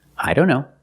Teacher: Or when we see the word don't. A lot of times the T in don't is silent. · Here the T is between consonants. So we don't pronounce it.